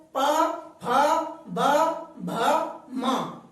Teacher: इन पांचों ही अक्षरों में हमारे होठ बंद होते हैं, इसलिए इनको ओष्ठव्य व्यंजन कहते हैं।